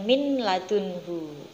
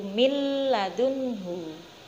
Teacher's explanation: nun sukun dibunyikannya bukan min ladunhu, tapi dimasukkan ke dalam huruf lam, yaitu mil ladunhu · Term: idgham